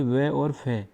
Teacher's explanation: नीचे का ओष्ठ यानी ओठ ऊपर वाले दांतों से स्पर्श करता है। जब हम इन दोनों का उच्चारण करते हैं तो हमारा नीचे वाला ओठ ऊपर वाले दांतों से स्पर्श करता है, इसलिए इनको दंतोष्ठ व्यंजन कहते हैं।